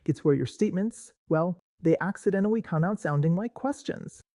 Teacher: That little lift at the end of the sentence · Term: uptalk